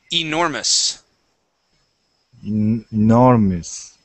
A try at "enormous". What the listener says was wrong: Okay, good. Pronounce that E at the beginning. Enormous. Enormous.